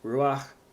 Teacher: that is a word where the accent is on the first syllable, not the last syllable. So that's important to know.